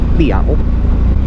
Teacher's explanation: Your Sara A, Sara E, and Ya Yak together make the Ia sound, and your consonant in the middle is Dot Tao, and it's got that Wa Wan at the end, so that gives you Teow, so it's Guay Teow. Remember not to say a T there, it's a unaspirated T.